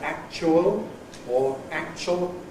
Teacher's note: Nowadays virtually everybody ordinarily says [ ʧ ], either [ ˈækʧuəl ] or [ ˈækʧəl ] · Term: coalesced form